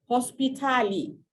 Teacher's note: the words are being changed to fit into the consonant, vowel, consonant vowel format